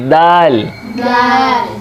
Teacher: दाल वहीं से जैसे ता है, ज़बान के नोक दांतों की बैक साइड जड़ पे, ऊपर वाले दांतों की